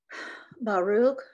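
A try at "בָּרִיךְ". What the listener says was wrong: It's the same root as Baruch, but it's a different vowel here. what's this? One drop. Barich. It's the vowels.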